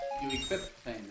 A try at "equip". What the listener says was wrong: You know, there's no T in equip.